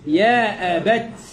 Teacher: يوقف عليها بانحباس للصوت مع جريان النفس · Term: همس